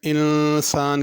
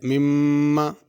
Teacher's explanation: انسان کے نون پہ غنہ ہے، مم اس میم پہ بھی غنہ ہے